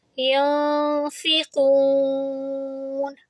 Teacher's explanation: یون، نون سکون کے بعد ہے فا، اور جب بھی تنوین اور نون سکون کے بعد فا آئے تو فا اخفا، یعنی اب ہم نون کی آواز کو چھپائیں گے اور یہاں پر 2 سیکنڈ آواز کو لمبی بھی کریں گے